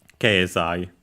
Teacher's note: accent falls after the ke.